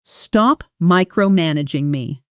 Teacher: the stress falls on the first syllable of the final part.